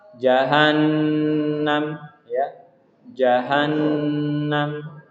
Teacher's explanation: di sini ada nun bertasydid. Jadi harus ditahan 2 harokat